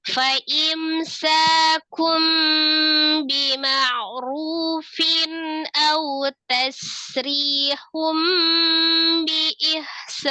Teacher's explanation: Fin a kasrah tanwin ketemu dengan huruf hamzah dibaca izhar halqi, dibaca dengan jelas ya. Hamzah salah satu huruf yang dari al-halqi, tepatnya tenggorokan bagian bawah.